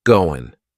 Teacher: That final G in the word going is going to be cut off, and we'll just say, going.